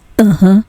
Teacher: the so-called glottal stop that is the word is pronounced with a short break